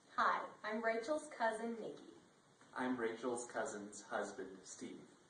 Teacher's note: did you notice how they pronounced the s as a z sound